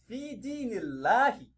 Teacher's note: As a reciter, you are expected to read the lamun in Ismul Jalala lightly. You read it lightly, not thickly. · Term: tarqiq